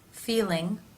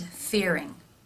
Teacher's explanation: In the R sound, you can see more dark space in the mouth because the tongue is pulled further back. In the L sound, the tongue is more forward, and therefore you can see it more easily through the teeth.